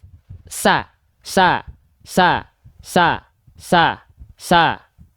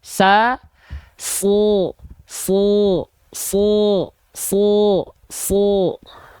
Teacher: teman-teman angkat pangkal lidah dan niatkan keluarkan vokal a keluarnya Pasti enggak akan vokal A tapi condong ke vokal o